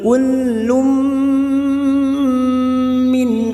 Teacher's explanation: lam yang berharokat duma tanwin bertemu mim idgham bi gunnah, siap masuk dan mendengung masuk pada huruf mim dan ditahan selama 3 harokat